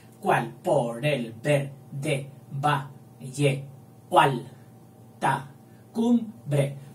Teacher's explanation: A mí me ha parecido mejor juntar la O con la A y dejar la E suelta. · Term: sinalefa